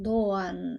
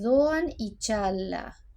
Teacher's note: los turcos la llaman la 'g' suave, no se pronuncia y se estira el sonido de la vocal anterior